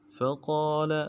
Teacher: فقال میں فا کو نرم سے ادا کرنا ہے، قاف کے بعد الف بنتا ہے، ایک الف دار میں کھینچیں گے، لام کو نرم سے پڑھیں گے.